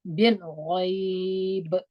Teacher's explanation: پر بامو قلقله وکړه په زیره نه وایو په ورغندي یې وایو